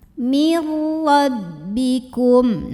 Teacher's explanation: Ra dibunyikan secara tafkhim karena ra-nya berbaris di atas fathah. Maka bacanya tebal, pangkal lidah diangkat.